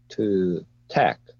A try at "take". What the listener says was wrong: Okay, you read it like tech, but the correct pronunciation for that is take. Don't forget to pronounce or have the sound of Y. Take. Just like pain, shame, plain, right?